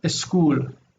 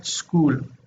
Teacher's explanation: they add an E to the beginning to make the S pronounceable for them